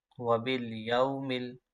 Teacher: यहाँ पर यालीन है, इसको लंबा नहीं करेंगे।